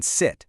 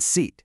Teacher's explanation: For sit, the sound is like a quick blink. It's over in an instant. For seat, your mouth holds this slight smile for a little bit longer.